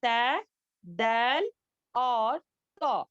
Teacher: والے ہیں تا دال تو اب اس کا مخرج کیا ہے ہماری زبان کی نوک جو ہے اوپر کے دانتوں کی جڑ میں لگنے سے ادا ہوتا ہے